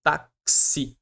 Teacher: No X aqui eu vou ter o som de KS e o I.